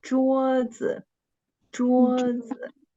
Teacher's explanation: Okay, the first syllable is the word stress. We should make an emphasis of the first syllable and read the second syllable, the neutral tone, very short and light.